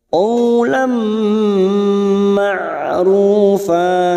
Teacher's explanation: Lam, ada fathah tanwin pada huruf lam alif di sini, siap masuk pada huruf mim dan ditahan selama 3 harokat, namanya idgham bigunnah. Qawlam ma'rufa.